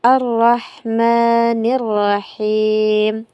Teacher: Kemudian pada ayat yang ketiga sama dengan yang pertama, yaitu kesalahan yang sering terjadi adalah pada pelafazan ha ini seharusnya dibaca tipis, kebanyakan orang membacanya tebal. Pelafasan yang benar itu Ar-Rahmanir-Rahim.